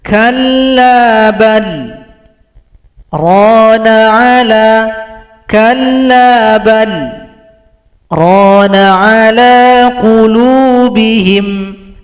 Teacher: Baca bal, tahan nafas 2 ketukan, langsung dibaca dengan rana ala. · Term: sakta